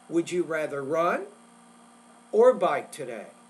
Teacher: when you have a choice, A or B, the first choice, it needs to be a little bit louder but higher pitched